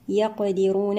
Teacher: القاف هنا ساكنة شديدا فك شدتها بالقلقلة، الراء مفخمة، الواو في حالة الوصل من الطبيعي وفي حالة الوقف مد عارض للسكون.